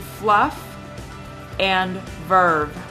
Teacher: through the vocal tra the Lao Dental fricatives F and V are produced by Biting Down on the lower lip